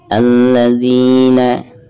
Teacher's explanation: Alladzina. Di sini ada kasroh zal lalu berhadapan dengan ya sukun maka dihukumi mad tabi'i, dibacanya 2 harokat.